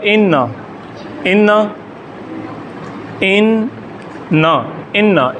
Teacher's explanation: شد والے حرف کی آواز 2 مرتبہ ادا ہوتی ہے، ایک بار جزم کی طرح پچھلے حرف کے ساتھ ملتی ہے، جیسے جزم آتا ہے پچھلے حرف کے ساتھ، اور دوسرے اس کی اپنی آواز ہے۔